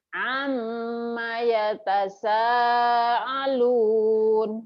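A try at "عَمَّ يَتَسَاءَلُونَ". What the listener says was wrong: Ketuker Hamzah Bu itu mah Bu. Ya, didangukeun. Ain. Amma yatasaalun amma yatasaalun. Oh iya, Ibu tinggal lagu sama cepetnya ya, speednya ya.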